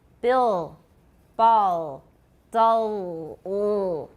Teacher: Can you hear that it's velar? It's way back in my mouth? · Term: dark L